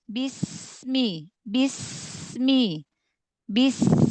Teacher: Sofirnya itu fokuskan ke ujung lidah, ke ujung lidah dari celah gigi atas dan bawah.